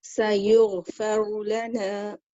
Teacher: The ra here is heavy because it's got the vowel pesh above it, so you're lifting it up